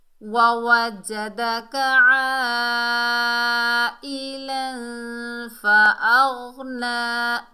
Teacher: आइन को हलक के दरमियान से अदा करना है